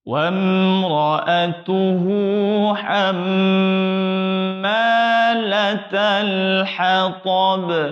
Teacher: mim tasydid wajib dengung. Nah, ditahan, dengung di situ.